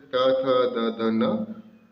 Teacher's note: ये उच्चारण स्थान है दांत, दंत्य।